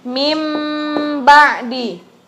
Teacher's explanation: cara bacanya mim ba'di menjadi huruf mim dan mim nya itu ghunnah selama dua ketukan · bertemu dengan huruf ba cara membacanya Jadi huruf mim disertai hunnah jadi jadinya tuh kita bacanya huruf mim Tapi pakai ghunnah ditahan dengan dua ketukan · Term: iqlab